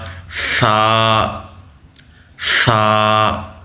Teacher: یاد رکھیں جب آپ نے ثا کو ادا کرنا ہے، جو آپ کی زبان ہے وہ دونوں دانتوں کے اوپر اور نیچے والے دانتوں کے درمیان ہو تو ثا صحیح سے ادا ہو جائے گا۔ ثا ثا کو پڑھتے ہوئے آپ نے سا نہیں کرنا، یعنی سین یہ سٹی کی آواز نہ آئے